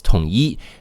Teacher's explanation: So 统 一 has E in the first tone.